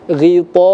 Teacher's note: hukum bacanya disebut dengan mad wajib muttasil yang panjangnya itu 4 sampai dengan 6 harokat